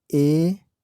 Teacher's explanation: तो जो आगे की भाग के सहारा से उच्चारण होता है, मतलब अगले जीभ के अगले भाग जो है वो एक्टिव होता है। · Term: अग्र भाग